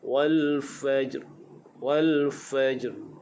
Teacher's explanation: dari segi bacaan ketika waqaf, ra di hujungnya pastikan dibaca dengan tebal. Wal fajr. Ra hukumnya takrir, dia bergetar. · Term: ra yang ditebalkan